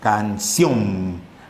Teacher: ¿Cuál es la sílaba que suena más? La sílaba que suena más es ción. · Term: aguda